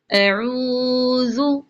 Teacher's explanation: عین کو لمبا کریں گے، حمزہ اور ذال کو نہیں